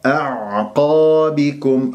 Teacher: القاف وبعدها مفخمة مرتبة أولى لأنها مفتوحة بعدها ألف